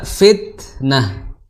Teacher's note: huruf ta dia memiliki sifat yang berbeda dengan dal, yaitu sifat hams